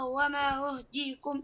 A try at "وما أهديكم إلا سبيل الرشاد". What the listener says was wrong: لا أحسنت أهديكم بالفتحة